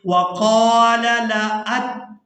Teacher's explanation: वक़ाल लअत्तख़िज़न्न, नून मुशद्दद पर गुना करेंगे